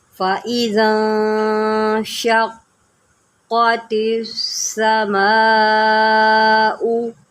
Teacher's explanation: ذال کو نرم کریں اور نون میں گنہ کریں